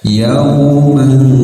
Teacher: samarkan suaranya dan ditahan sekitar 2 harokat dan siap-siap lidah di posisi huruf sa ya, ujung lidah menyentuh ujung gigi seri atas ya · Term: ikhfa